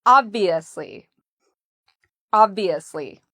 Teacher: we put the stress on the first part, ob, and then we have the V, ob-V, and notice how my lips go under my teeth, ob-V, asli.